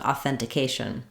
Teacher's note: in authentication the stress is on the k a syllable the second to last syllable